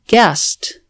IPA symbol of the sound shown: t